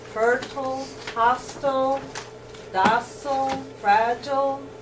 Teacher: With I-L-E saying ill, fertile, hostile, docile, fragile, usually unaccented.